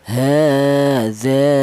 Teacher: Kalau tidak ada alifnya berarti diberi harakat berdiri. Ya, ini menunjukkan bahwa huruf ha ini dibaca panjang. panjangnya mad thobi yaitu satu alif atau dua harakat atau dua ketukan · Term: matobi